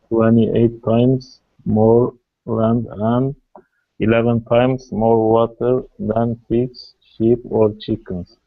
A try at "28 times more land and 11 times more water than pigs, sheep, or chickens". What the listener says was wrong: Pronunciation was very correct.